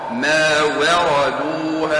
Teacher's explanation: الواو مرقة الراء مفخمة